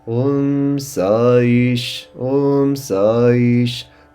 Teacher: the A and the E join together to form Sa-E.